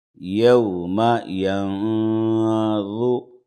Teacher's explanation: ینظو نون ساکن کے بعد وا ہے بغیر تشدید والا ہے اخفا ہوگا نون کی آواز کو ناک میں چھپائیں گے